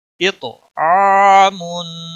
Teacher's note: तो पे कलकला होगा और तो मोटी भी पड़ी जाएगी, आइन के ऊपर मद असली है, यानी खड़ी ज़बर एक अलिफ के बराबर इसको खींचना होगा